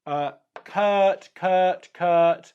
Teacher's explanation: Kurt is unrounded and relaxed